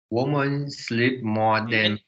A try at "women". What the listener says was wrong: Women, women, women, women, women. not woman, women, women, women.